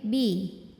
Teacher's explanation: Bi tempat keluarnya adalah dengan mempertemukan dua bibir